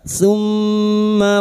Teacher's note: mim yang bertasdid guna musyaddadah kita dengungkan selama 3 harokat